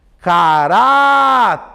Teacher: A penúltima sílaba foi a sílaba que durou mais.